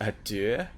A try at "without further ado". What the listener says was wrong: adieu. not adieu, it's not French, it's without further ado, as in A space do, D-O.